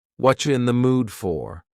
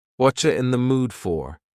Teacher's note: the word you has been reduced to cha.